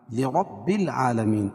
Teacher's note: اظہار شفوی لم لرب العالمین، را کو پور پڑھیں گے اور عالمین کھڑا زبر قائم مقام الف مدہ کے، اس کو ایک الف کے برابر کھینچ کے پڑھیں گے